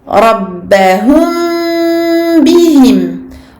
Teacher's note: La lettre mim va être atténuée par la présence du ba. Les 2 lettres ont le même makhraj. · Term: al-ikhfa al-shafawi